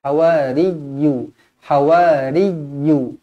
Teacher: Qala al-hawariyu. Sekali lagi ya yang bertanda sabdu kita tekankan dia.